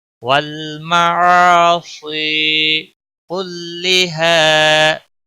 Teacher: واللام کو ہلانا نہیں، عین یہاں پر الف مدہ ہے، 1 الف کے برابر کھینچ کر پڑھیں گے. صاد کو موٹا پڑھیں گے اور یا مدہ ہے، 1 الف کے برابر کھینچ کر پڑھیں گے